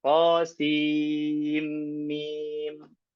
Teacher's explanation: Kalau riwayat kita membacanya dengan idgham. Qasim mim. Ya, sin idgham ke mim. Sim mim begitu.